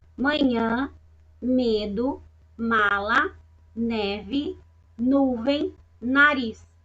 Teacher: Vocês vão reparar que vai sair um arzinho aí do seu nariz. Por isso que elas são chamadas de letras aí nasalizadas, né?